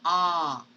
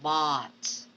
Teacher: This is a low vowel, so you have to lower down your jaw to say ah, just like in bot.